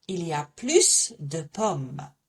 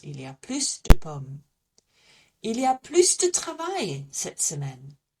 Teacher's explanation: So I'm going to say plus because I'm going to pronounce that S.